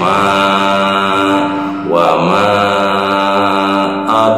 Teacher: ini ada huruf dal yang sukunya sukun asli. Ini termasuk dalam hukum tajwidnya qol, qolah, sugro. Karena sukun dalam huruf dalnya sukun asli di tengah-tengah kalimat, qol, qolah, sugro.